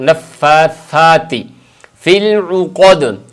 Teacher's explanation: زبان کی نوک اور سامنے والے دو دانت، ان دونوں کے ملانے سے ثا ادا ہوتا ہے